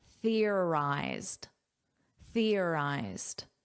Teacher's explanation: notice an unvoiced th. You put your tongue between your teeth.